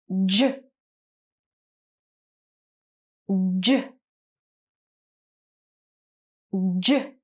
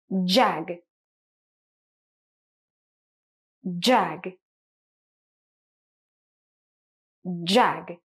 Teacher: So this is a voiced sound. You're going to use your voice and feel the vibration in your throat. What you do is you place your tongue up there. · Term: J sound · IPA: /ʤ/